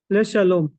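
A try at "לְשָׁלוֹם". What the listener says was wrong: Yeah, Le Shalom.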